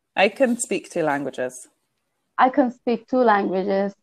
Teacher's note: can is unstressed so it becomes con